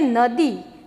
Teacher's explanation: દી બોલો એટલે ઈ સ્વરનો ઉચ્ચાર થાય છે, દીર્ઘ ઈ સ્વરનો ઉચ્ચાર થાય છે